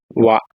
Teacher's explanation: ದಂತೋಷ್ಟ್ಯ ದಂತ ಅಲ್ಲು ಮತ್ತು ತುಟಿಯ ಸಹಾಯದಿಂದು ಎಂದು ಉಚ್ಚರಿಸತಕಂತ ಅಕ್ಷರ